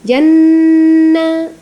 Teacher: nun sukunnya itu ghunnah dua sampai 3 harakat